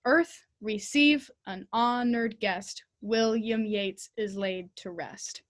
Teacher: earth is important it gets our attention it captures our attention it has a stress on it · here we want to emphasize earth in the very first sentence not the first beat of receive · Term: trochaic